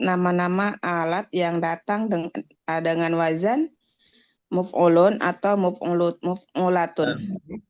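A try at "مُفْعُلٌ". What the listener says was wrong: Dengan di dhammah mimnya bukan di kasroh.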